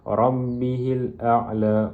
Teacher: ra tafqim ataupun ra tebal kerana berbaris fathah